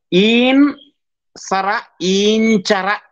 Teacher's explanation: ಹಾಗೆ ನುಣ್ಣ ಸರ, ನುಣ್ಚರ, ಆದ್ರೆ ಈನ್ ಸರ ಈಂಚರ ಆಗಿದೆ. ಅಲ್ಲಿ ನಕಾರವು ñಕಾರವಾಗಿ ಉಚ್ಚಾರಣೆಯ ಸಂದರ್ಭದಲ್ಲಿ ಚಕಾರದ ವರ್ಗಪಂಚಮವಾಗಿ ಬದಲಾವಣೆ ಹೊಂದಿದಂತಹದ್ದನ್ನು ಗಮನಿಸಬೇಕು